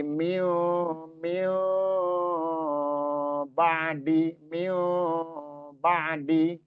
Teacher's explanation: ketika dia enggak begitu rapat bibir kita dan ditahan, itulah samar jadinya suaranya samar. kan ikhfa itu artinya samar atau menyamarkan atau menyembunyikan suara yang aslinya gitu. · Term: ikhfa hakiki